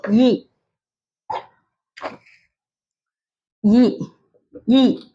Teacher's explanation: நாவின் அடிப்பகுதி மேல்வாயின் அடிப்பகுதியை பொருந்துவதால் பிறக்கிறது